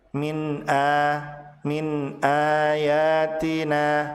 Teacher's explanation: a dibaca panjang 2 harokat disebut sebagai mad badal